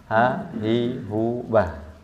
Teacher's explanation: huruf Ha ini bersifat Hamas artinya keluar nafas jelas